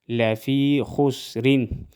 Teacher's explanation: یا مدہ ایک الف کے برابر کھینچ کر پڑھیں گے